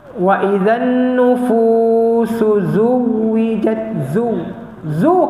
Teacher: Huruf waw dia bukan syiddah, dia bukan tertahan, dia rokhawah, dia bergerak. Dia ada nabar, tekanan sebab sabdu tadi, dan dia jangan diputuskan.